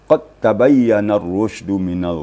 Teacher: bertemu dengan ta jadi hukumnya adalah idgam mutaqaribin idgam mutaqibin Ya maksudnya diidgamkan Dal kepada Ta atau dimasukkan Dal ke dalam ta